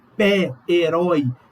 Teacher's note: O acento agudo ele aparece nessas letras E, O, quando eu tenho uma vogal tônica com esse timbre aberto.